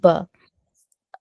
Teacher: जब दोनों होठों का गीला हिस्सा सा जरा जोर से मिलकर अलग हो जाता है तो हर्फ ब अदा होता है। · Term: ब का मखरज